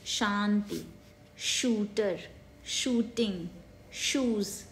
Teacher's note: Strong palatal S जो होता है वो श, जो कि तालव्य, तालु से बोला जाता है, उसे हम ऐसे लिखते हैं, तालव्य श, और एस एक्यूट.